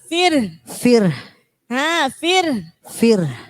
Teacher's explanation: Jadi setelah fir dikasih hembusan hak.